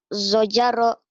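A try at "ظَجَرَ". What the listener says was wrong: Ya, zo agak rapuh ya. Zo, boleh nanti dilatih aja. Zojaro. Zojaro.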